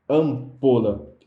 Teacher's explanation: Nesse caso aqui, o M não é uma consoante. Eles são nasaladores da vogal anterior, criando esse som, né, ampola. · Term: dígrafo vocálico